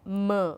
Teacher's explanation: When it is nasal, it has to go through your nasal cavity, m. When you say m, the air passes through the nasal cavity. You can't stop, like you can't block your nose and then say m, can't do that.